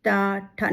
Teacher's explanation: वहां पर आप जब ट बोल के देखिए तो आपकी जीभ वहां लगेगी। ट ठ ना दांत में लग रही है ना तालू में लग रही है बीच में लग रही है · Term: मूर्धन्य